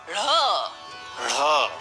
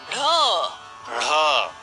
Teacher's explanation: इसका उच्चारण जीभ की नोक द्वारा मूर्धा के थोड़े अंदर से आती हुई वायु को रोक कर किया जाता है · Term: द्विगुण व्यंजन